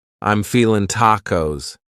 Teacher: You might say, I'm feeling, cutting off that G. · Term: reduction